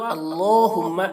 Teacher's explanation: اللہ کلام کو پر کر کے، اور میم میں تشدید ہے تو غنہ کریں گے